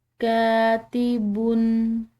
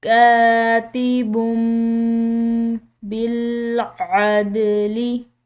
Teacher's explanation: میم یہ دونوں اکٹھے آ رہے ہیں تو ایسی صورت میں تنوین کی آواز بالکل ختم ہو جائے گی، اس کی جگہ پر میم کو پڑھا جائے گا